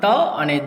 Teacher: ત અને દ આ અલ્પપ્રાણ છે અને તેમાં આપણી જીભ એ દાંતને અડે જ છે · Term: દંત્ય